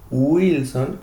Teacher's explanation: Wilson con el sonido de la u y no de pronto Wilson con el sonido de la G